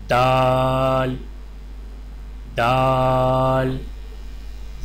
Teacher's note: دال کی ادائیگی میں زبان کی نوک کو سامنے والے اوپر کے 2 دانتوں کی جڑ سے لگا کر باریک آواز میں پڑھیں